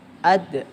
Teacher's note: Wa ma itu mat jaiz munfasil panjangnya 4 atau 5 harakat. Ad itu qalqalah sugra memantulkan suara kecil di tengah kalimat